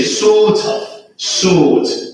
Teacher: Now you know that in British accent you do not pronounce the R sound.